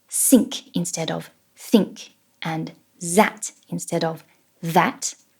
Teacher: replacing the TH sounds with S and Z, like many French speakers do